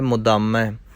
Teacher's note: ਕਈ ਵਾਰ ਦੱਦੇ ਨੂੰ ਭਾਰਾ ਕਰ ਜਾਂਦੇ ਨੇ ਅਤੇ ਧੱਦਾ ਬਣ ਜਾਂਦਾ ਹੈ, ਮੁਦਾਮੈ ਪੜ੍ਹ ਜਾਂਦੇ ਨੇ। ਇਸ ਲਈ ਇਸ ਨੂੰ ਪੋਲਾ ਕਰਨਾ ਹੈ, ਮੁਦਾਮੈ। ਗਨੀਮੁਲ ਸਿਕਸਤੈ, ਗਰੀਬੁਲ ਪਰਸਤੈ, ਬਿਲੰਦੁਲ ਮਕਾਨੈ, ਜ਼ਮੀਨੁਲ ਜਮਾਨੈ।